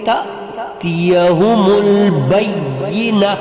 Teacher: یہاں پہ آپ دیکھ رہے ہیں کہ آیت ختم ہو گئی، تو یہاں پر ہم پھر وقفہ کریں گے، تأتیہم البینہ، ہمیشہ گول تا جو ہوگی وہ وقفہ کی صورت میں ہا میں تبدیل ہوگی، اور کون سی ہا میں، گول ہا میں، گول ہا یا چشمی ہا جو سینے سے ادا ہوگی اس ہا میں تبدیل ہوگی، ٹھیک ہے۔